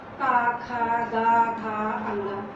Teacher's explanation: का वर्ग तो कंठ से हो गया, जिसको हम कंठ बोलेंगे